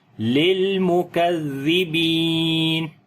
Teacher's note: کاف کو باریک پڑھیں گے، زال کو نرم پڑھیں گے، اور یہاں پر با کو لمبا کریں گے، یا مدہ ہے